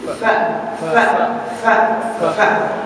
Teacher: F keluar dari ujung gigi gunting atas sama perut bibir bawah maknanya angin keluar dari situ